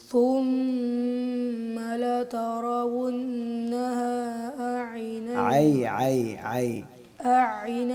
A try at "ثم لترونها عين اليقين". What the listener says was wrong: نہیں حمزہ نہیں پڑھنا ہے. ثم لترونها عين اليقين